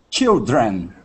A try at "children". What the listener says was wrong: So I'm hearing a little bit of a roll in your tongue. It sounds like this. Children. Children. Keep your tongue down. Down. Children. The R is down. Children. Again, children.